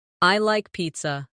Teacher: Let your voice fall gently at the end.